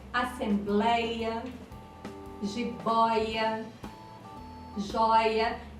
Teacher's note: em assembleia a sílaba tônica é a penúltima, ei, e é um ditongo aberto, de pronúncia aberta, ei, então acentuava.